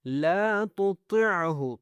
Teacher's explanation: تو کو موٹا کرنا ہے